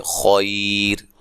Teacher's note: اگر ہم وقف کرتے ہیں تو خیر موٹا نہیں پڑھیں گے بلکہ خیر، را کو باریک پڑھیں گے